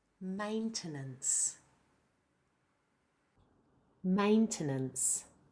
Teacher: The second and third syllables are both the weak vowel schwa.